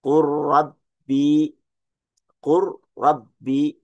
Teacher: Pertemuan lam sakinah pada fi'il dan harf dengan huruf ra. Dia diidghamkan dengan idgham kamil.